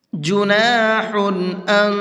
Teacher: لیس علیکم جناح ان تبتغوا فضلا من ربکم، جناح ان، یہاں پر قاعدہ سمجھیے گا، جناح اس تنوین کو جلدی پڑھنا ہے، ظاہر کر کے پڑھنا ہے، یہاں پر غنہ اخفا نہیں کرنا ہے